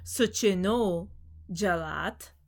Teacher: So in relation, you have suchinaha for ablative singular, suchinaha jalat, and then with the sandhi, it becomes suchino jalat, because when a visarga is preceded by an a and followed by a soft consonant, it changes to an o.